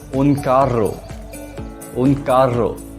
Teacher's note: The double R in Spanish is rolled or trilled.